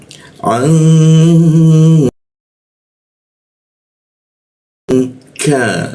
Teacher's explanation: huruf k posisinya di tenggorokan, lidahnya kita turunkan sehingga membaca K itu ada hembusan udara. K masuk ke lam.